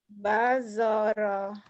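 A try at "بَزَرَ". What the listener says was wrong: Bazaro, bukan bajoro, bazaro. huruf huruf itu Bu, ada yang berbunyi A, ada yang bunyi O ya. Kayak kayak istilahnya huruf Sunda, huruf Jawa, Joko orang Jawa, orang Sundanya Jaka, Dodo, Dodo, orang Jawa, orang Sundanya Dada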